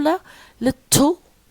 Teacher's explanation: We have l here, which is a lateral consonant, and it's also an alveolar. And here it comes at the beginning. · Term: clear la